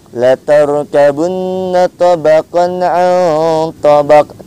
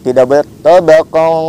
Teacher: Jadi permisa kalau membaca Al-Qur'an apabila ada tanwin ataupun nun sukun bertemu dengan ain, maka itu hukum bacanya izhar halqi. Tidak boleh didengungkan, tidak boleh disamarkan bacaannya. Jadi harus dijelaskan, harus diterangkan.